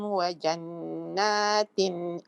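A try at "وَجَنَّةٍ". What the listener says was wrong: Jadi wajannatin dipendekkan tadi ya. Tadi dibaca panjang wajannatin tadi. Jadi wajannatin. Wajannatin.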